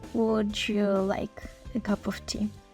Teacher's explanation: якщо ви звуки д й об'єднаєте в звук Дж